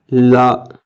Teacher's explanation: இந்த லாவானது வந்து நம்மளுடைய நாவின் இரு பக்கங்கள் தடித்து மேல் பல்லின் அடியை தொடுவதால் இந்த லகரம் தோன்றும். அதாவது நம்மளுடைய நாவினுடைய அடிப்பகுதி 2 பக்கம் தடித்து மேல் பல்லினுடைய அடிப்பகுதியை அப்படி லைட்டாக தொடர்றதுனால லா, இப்படி இந்த வகர லா தோன்றுகிறது.